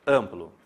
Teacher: O som sai pelo nariz. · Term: nasalizar